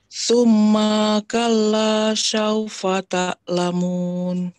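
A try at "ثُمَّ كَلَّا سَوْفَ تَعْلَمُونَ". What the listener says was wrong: Summanya pendek. Maka, maka. Summaka langsung. Sum yang nahan sum ma satu kala.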